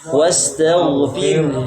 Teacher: Ketika sukun yang condong adalah hamesnya, rokhwahnya, ya. Suaranya, nafasnya harus mengalir. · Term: ha dhamir